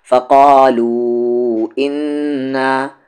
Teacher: نون پر یہاں تشدید ہے تو غنہ کریں گے۔